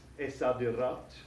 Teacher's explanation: And we know that the sad, letter sad here, is a sun letter, so we don't pronounce the L in the definite article. It disappears and doubles the first letter of the noun.